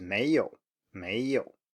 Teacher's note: Okay, so next up is second tone plus third tone. So nothing strange here, rising tone and then a low tone